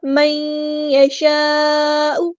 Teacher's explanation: نون ساکن کے بعد یا یہاں پہ ادغام ہو رہا ہے، ادغام مع الغنہ ، من یشاء، ادغام کرتے ہوئے الف کے برابر لازمی رکنا